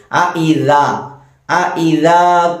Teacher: അഇദാ രണ്ട് ഹംസ ഉണ്ട്, ശ്രദ്ധിക്കണം. അഇദാ ദാലിന്റെ മഖ്റജ് നാവിന്റെ അറ്റവും മേലെ മുൻപല്ലിന്റെ അറ്റവും